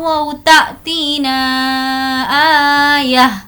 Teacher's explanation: ना को हमें अच्छे से खींचना है क्योंकि इस पर मद है